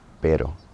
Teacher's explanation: That R in the middle of the word is more just like a T, like a tap on the on the roof of your mouth.